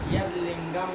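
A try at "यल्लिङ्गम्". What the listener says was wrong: यद कहाँ, हम यल बोल रहे हैं। दादा मर गए क्या हमारे? ल बोल रहे हैं, तुमको समझ में नहीं आ रहा है? यद यदि कर रहे हो। ये यल लिंगम तल लिंगम बोल रहे हैं, उसमें ल जब आ रहा है तो द का ल हो जा रहा है, इसलिए ल ही बोलिए, फिर आगे द बोलते रहिए।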